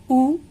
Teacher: ओष्ठ्य। देखिए, जब आप बोलते हैं उ तो दोनों ओठ काम करते हैं।